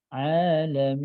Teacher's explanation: ketika waqaf itu nun sedikit ngalir suaranya.